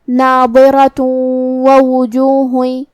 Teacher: آخری میں تاء مدورہ ہے اور اس پہ تنوین پیش ہے، ہم یہ آیت کو اگلی آیت کے ساتھ ملا کے پڑھے تو جو کہ واو کلمت وجوہ میں حروف الادغام بغنہ میں سے ہے، تو ہم یہ حکم کو غنہ کے ساتھ اور تشدید کے ساتھ ادا کریں گے، ناظرۃ ووجوہ، اور ہم کلمت ناظرہ پہ رکیں گے تو تا پہ ہا سے رکیں گے، الی ربها ناظرہ ووجوہ یومئذ باسرہ۔